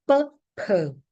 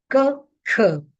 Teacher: the p, k, and t sounds, which are voiceless, are aspirated